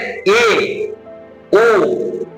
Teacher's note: পুরোটা উঁচুতে যাবে না, তার থেকে একটু নিচু, তার থেকে একটু কম হবে। তাহলে এ ও উচ্চারণ করার সময় জিহ্বাটা পুরোটা কিন্তু একদম টাগড়ায় গিয়ে ঠেকছে না, তার থেকে একটু নিচে আসছে। তো উচ্চ মধ্য স্বরধ্বনি এ আর ও উঠবে, কিন্তু গোটাটা নয়, মধ্যভাগ, মাঝামাঝি জায়গা পর্যন্ত যাবে।